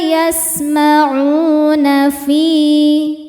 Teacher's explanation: fi juga mad tabi'i karena ada ya sukun didahului harokat kasrah, maka fi ini panjang 2 harokat